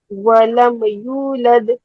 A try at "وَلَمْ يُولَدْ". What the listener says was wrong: ولم نہیں کہنا ہے، ولما نہیں کہنا، ماں جو ہے آپ نے اس کو ہلا دیا ہے، ولم یولد،